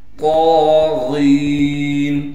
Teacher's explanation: طا پر کڑا زبر ہونے کی وجہ سے طا کو ایک الف کی مقدار کھینچیں گے، غین کو موٹا کر کے پڑھنے کے ساتھ غین کو ایک الف کی مقدار کھینچیں گے اس لیے کہ غین کے بعد یا مدہ ہے۔